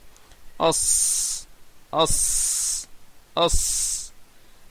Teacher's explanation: La lettre sad et la lettre sin et la lettre zay, ils ont le même point de sortie. Le point de sortie, ça correspond donc au bout de la langue avec la face inférieure des deux dents inférieures, thanaya as-soufla.